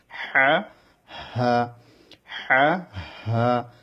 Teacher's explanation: হা হচ্ছে কণ্ঠর একদম মূল থেকে অর্থাৎ যেটা সিনার সঙ্গে লাগানো ওইখান থেকে হা এই অক্ষরটি উচ্চারণ হবে